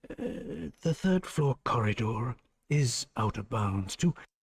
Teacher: He speaks with a soft Irish accent. So he does pronounce the R.